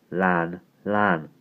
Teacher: when a Welshman said that his tongue isn't like that and the whole sound comes out from the sides of his mouth